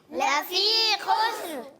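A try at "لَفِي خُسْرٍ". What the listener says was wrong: خا کی ادائیگی کلیئر کریں، خا حلق کے اوپر والے حصے سے. لفی خسر.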